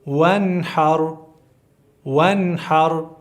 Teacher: نو حا چې راشي معنا دا ده چې دلته به هغه نون صفا وایي واضحه به یې وایي دې ته اظهار وایي ، واضحه به وایي. وانحر، اخرج، ارسل، اغطش، غین طا ډک